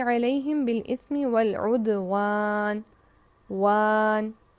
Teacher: واو باریک حروف میں سے ہے، الف ما قبل کے تابع، اس لیے واو کو بھی باریک پڑھا جائے گا